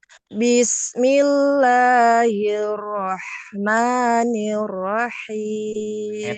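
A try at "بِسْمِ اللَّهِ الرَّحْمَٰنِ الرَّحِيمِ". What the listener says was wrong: Tekan lagi huruf ro-nya. Bismillahirrahmanirrahim. Hir, hir. Langsung kan?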